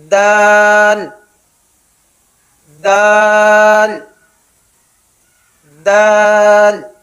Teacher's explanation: اس کا مخرج ہے زبان کی نوک جب اوپر والے سامنے کے دانتوں کی جڑ میں لگے